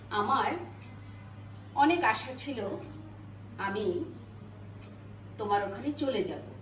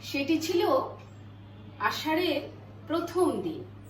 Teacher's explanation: লিখেছি অনেক রকমের শীষজাত ধ্বনি, কিন্তু উচ্চারণ করছি একটি মাত্র ধ্বনি দিয়ে, যেটাকে আমরা তালব্যস্য হিসেবে চিহ্নিত করি। তাহলে শব্দের আদি, মধ্য, অন্তে এর একচেটিয়া প্রভাব রয়েছে বলে উচ্চারণগত দিক থেকে বাংলায় এই তালব্যস্যই হচ্ছে শীষজাত মূলধ্বনি।